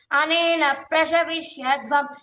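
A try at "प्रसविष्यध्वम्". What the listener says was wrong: ప్రషవిష్యద్వం అన్నావు ప్రస అది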